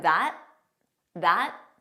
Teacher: so you just don't press out that final T